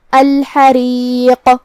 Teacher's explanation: کلمت الحریق میں یہاں ہم ہا کو حلق کے درمیان والے حصے سے ادا کریں گے. را کا حکم ہے ترقیق کیونکہ اس کے نیچے زیر ہے تو ہم را کو ہلکی آواز میں پڑھیں گے